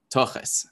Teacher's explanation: And so that turns into tochas, which is like the, you know, again, with the Yiddish pronunciation, the kamatz a vowel turns into an O, and the thav, which in my accent just stays as a plosive